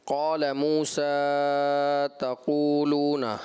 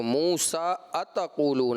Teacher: آپ نے جب آغاز کیا بیٹا پہلی آیت کا، آپ نے پڑھا قال موسیٰ تقولون، حمزہ جو ہے آپ حذف کر گئے